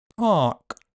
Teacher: showing aspiration, a reduced vowel length and a few different possibilities for the /k/ at the end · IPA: [pʰɑˑʔk’]